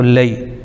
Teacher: لام پر زبر لیکن یا ساکن تو لئی، یہ ہو جائے گا یالین